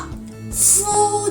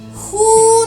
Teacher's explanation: we don't have [f] sound in Japanese so not [fu], but [hu]